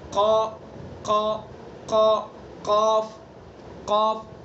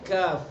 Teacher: نیچے جائیں گے قاف، تھوڑا اوپر کو آئیں گے کاف